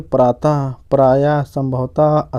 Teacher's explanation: विसर्ग का उच्चारण ह की तरह हो